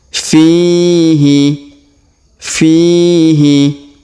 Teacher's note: huruf Fi kita panjangkan dua harakat karena terdapat Ya Sukun di depannya